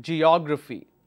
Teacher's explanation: Now this O will take the stress here because that's a antepenultimate.